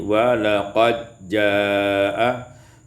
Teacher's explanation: idgham dal fil jim, diidgham dal pada jim maka menjadi walaqad jaa